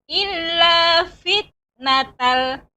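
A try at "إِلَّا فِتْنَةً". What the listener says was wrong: Kurang Ibu, fit. Jadi fit ya ada hamas ya pada ta, karena sifat ta itu hamas.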